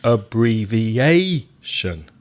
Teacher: 1, 2, 3, 4, 5 syllables in abbreviation. The strong syllable is syllable number 4.